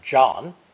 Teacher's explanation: English J in the name John is actually a combination of D plus ZH in phonetic spelling. Without that plosive D, we would probably have the French pronunciation for Joan of Arc, Jeanne d'Arc.